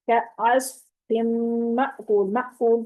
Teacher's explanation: مأکول پہ جھٹکا آئے گا کیونکہ حمزہ ساکن ہے، تو اس طریقے سے آپ پڑھیں گے۔